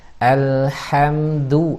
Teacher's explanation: Dal itu dari ujung lidah bertemu dengan pangkal gigi seri atas.